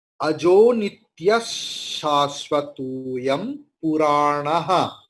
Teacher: Then ajo nityas, because shakara is there. So visarga's pronunciation will be like shakara.